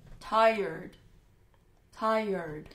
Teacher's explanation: 这个发音要点就是两个元音之间要加个耶的音